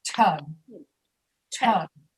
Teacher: With tug, we breathe after the letter T.